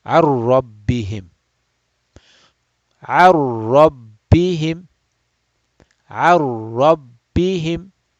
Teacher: we go straight and we skip the noon sound altogether, and we go and join with the ra. Ar. So it's like basically like going like this. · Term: idgham bila gunna